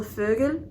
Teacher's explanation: Now, the O is, to me, almost kind of like a French sound. It's very like towards the front and very like your mouth is very closed, like eh. So for example, Vögel, which means bird, that is a German word.